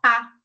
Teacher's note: E tem a posição mais baixa da nossa língua, que é quando pronunciamos, por exemplo, A, que é pá. Então, nós vamos ver que a língua, ela vai abaixar e vai ali no que chamamos de assoalho da boca.